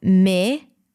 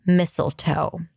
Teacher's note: Mi-sul-toe. So it's an S sound. There is a schwa there. And then the O is in go at the end.